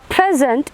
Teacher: it means that is a noun because the stress is on the first syllable